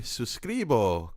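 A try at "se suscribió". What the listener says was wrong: There's an accent at the end, so it's suscribio. Suscribio. You're putting the wrong emphasis on the wrong syllable.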